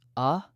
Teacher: Tiny variations, but all of them landed in the same narrow zone. A single, short vowel, often with an H in front, said with a rising, questioning tone.